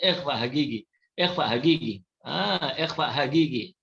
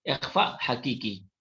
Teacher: Logat Yaman ni qaf dia bunyi ga.